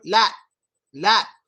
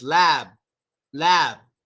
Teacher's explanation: Lips are relaxed, but with the P, they're tight,